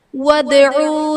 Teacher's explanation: ودعو میں دال حرف قلقلہ ساکن ہے، یہاں پر قلقلہ خوب ظاہر کریں گے۔